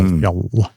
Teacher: With the L is held longer. So the double L does mean something, but it's a longer L. Fjall. So in Swedish or Norwegian, that double consonant at the end means the vowel is short.